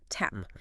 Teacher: You feel that short, wide butterfly A. Your jaw drops, your lips pull back. The sound is really fast.